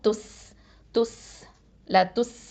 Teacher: காற்று வந்து வெளியில் வரணும், ஹம்ச சிஃபத்து கொடுக்கணும்